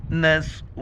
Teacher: را کے اوپر پیش ہے، موٹا کر کے پڑھیں گے